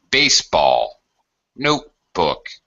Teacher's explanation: the second word will have a loud, long, stretched, clearly pronounced, but secondary stress, a low tone on the low scale.